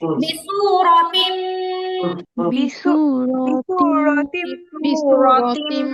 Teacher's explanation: রয়ের মধ্যে কিন্তু টান নাই